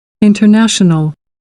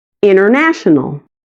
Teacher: com a primeira pessoa pronunciando o t e a segunda pessoa assimilando o t ao som do n